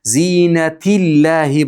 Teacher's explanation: Agar kasra bo'lsa-chi, zinatillahi bo'lib ingichka o'qilinadi.